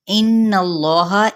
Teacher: غنہ کرنا ہے، یعنی تھوڑی دیر ناک میں آواز کو ٹھہرانا